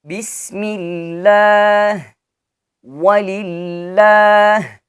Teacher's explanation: if the word Allah is preceded by a kasra, it is to be pronounced lightly.